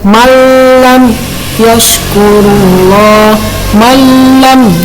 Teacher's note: Nah, ini contoh idgham ya. Ketika nun mati dimasukkan ke lam, jadi nun mati itu seakan-akan tidak dibaca ya, langsung lam. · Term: idgham bilaguna